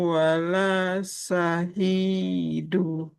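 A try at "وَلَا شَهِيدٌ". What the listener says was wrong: Gak boleh syahidu. Wala syahid. Kalau kita berhenti di sini kan dalnya jadi sukun.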